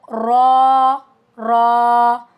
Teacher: जुबान की नोक तालू के करीब जाती है। तब हमारे पास र अदा होता है। · Tip of the tongue near the प्लेट। Sometime its light letter और समटाइम हैवी डिपेंड ऑन हरका।